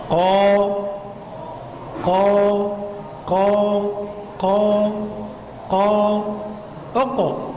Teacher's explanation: حرف القاف عند الفتح نقول انه يخرج من اقصى اللسان